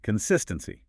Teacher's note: The stress here is on the second syllable.